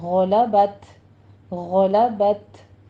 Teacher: غین کو پر پڑھتے ہوئے آگے تا پر ہمس کریں گے